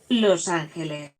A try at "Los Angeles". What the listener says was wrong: Without the accent on the A. The Angels. Los Angeles. Los Angeles.